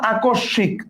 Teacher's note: তার মানে দন্ত স ডাবল উচ্চারণ হয়েছে